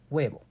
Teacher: Spanish B is gentle, smooth, and produced with a relaxed movement near the lips.